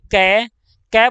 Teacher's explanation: क के अंदर अंत में हमें ध्वनि सुनाई दे रही है अ की